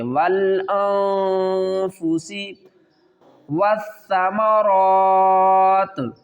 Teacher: نون ساکن ہے اس کے بعد فار ہے، حروف اخفا میں سے نون کی آواز کو چھپا کر پڑھیں گے۔